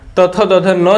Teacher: दंत से क्या होता है, तो दंत से आपका हो जाता है तथ दध न जो होता है वो दंत से उच्चारण होता है